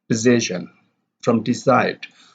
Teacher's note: So the d sound is deleted in decision. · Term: deletion